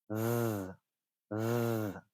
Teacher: there's the voiced TH sound, and there is vibration in that one